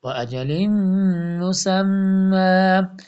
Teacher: لام کے اوپر تنوین نیچے دو زیر ہے، تو اس کے بعد میم مشدد آ رہا ہے تو ادغام یرملون ہوگا